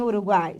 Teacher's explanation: o U é semivogal, o A é vogal e o I é semivogal. Ficam sempre juntos, são inseparáveis. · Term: tritongo